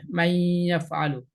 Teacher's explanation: নুন যেটা আছে সরাসরি মান হিসেবে নুনটা উচ্চারণ হবে না, এটা ইয়াকে একসাথে মিলিয়ে পড়তে গিয়ে নুনটা চলে যাবে